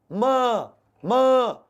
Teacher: मुंह और नाक दोनों से हवा निकले, वायु बाहर आए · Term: अनुनासिक वर्ण